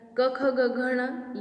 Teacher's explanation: क, ख, ग, घ, ण, ये जो स्पर्श व्यंजन है ये कंठ के माध्यम से बोले जाते हैं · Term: कंठ्य